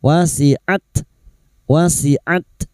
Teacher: huruf ta yang memiliki sifat hames dan siddah